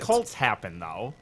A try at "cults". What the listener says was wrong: Colts. You said colts, like horses.